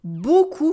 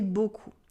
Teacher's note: Here notice that EAU sound like O in beaucoup. And we also have a silent P at the end. We don't say beaucoup, we say beaucoup.